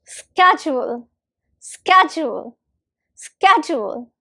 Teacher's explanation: Now let's speak it together and the stress is on the first syllable. Ske. It's on the ske, first syllable.